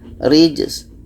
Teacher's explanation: Sin ini hamas, ada anginnya. Rijs. Sedangkan ja ini qalqalah, ada pantulannya.